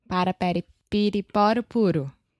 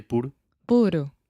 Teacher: your tongue is just up touching the top of your mouth really really fast and it's just a quick little tap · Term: flap T